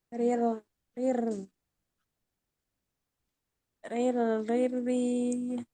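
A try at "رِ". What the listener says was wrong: Ini masih keangkat ya, pangkal lidahnya masih keangkat. Diturunkan. Riri, riri, riri.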